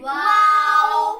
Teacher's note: होठों को गोल करने से अदा होता है